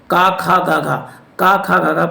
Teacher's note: का वर्ग के सभी वर्ण कंठ व्यंजन कहलाते हैं